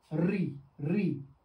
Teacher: हमारी जीभ क्या हो रही है? ऊपर वाले जो हमारा जो मुंह का जो तल है ऊपर वाले तल को क्या कर रहा है? टच कर रहा है। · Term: मूर्धा स्वर